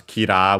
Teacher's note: in Japanese becomes kira with a long ah because yeah they don't have the there isn't the sound uh